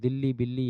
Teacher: दिल्ली में द्वित व्यंजन है जिसमें आधा ला और फिर एक ला होता है पूरा वो द्वित व्यंजन होता है दिल्ली बिल्ली यह सब ठीक